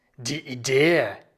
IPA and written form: diː ˈiːde (die Idee)